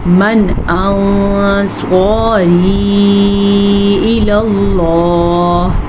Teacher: تو جب بھی نون ساکن کے بعد حروف ہلکی میں سے کوئی حرف آئے گا تو ہم نون ساکن کو ظاہر کر کے پڑھیں گے اور بغیر غنّے کے پڑھیں گے